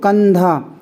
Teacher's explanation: इस अनुस्वार का जो उच्चारण होगा जो उच्चारण ध्वनि निकलेगी वो ना निकलेगी क्योंकि धा जो है अनुस्वार के बाद है